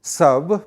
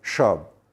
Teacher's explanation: maybe in their speech you will find that all sas are pronounced as sh. So, they will say sab pronounced as shab.